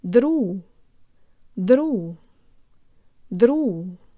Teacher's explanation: Jaw slightly forward, tip of the tongue behind the bottom teeth, lips rounded and protruded. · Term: Russian default mouth position